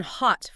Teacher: the O in hot for instance is pronounced further back in your throat almost like you're about to yawn